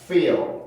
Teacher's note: 모음이 밑에 있다가 L 발음을 위해서 혀가 뜨니까 그 중간에 내가 의도하지 않은 어떤 소리가 만들어지게 되는데 그 소리가 바로 슈아 소리. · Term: dark L